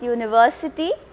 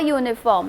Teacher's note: We say university with a Y sound at the beginning as though it was spelled university, Y-O-U.